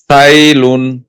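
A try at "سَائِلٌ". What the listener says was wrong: সিনটা একটু সিটাজ হলে আরেকটু বেশি সুন্দর হতো। সিন ইয়া জবর সাই, লাম দুই পেশ লুন, সাইলুন, অফ করিলে সাইল।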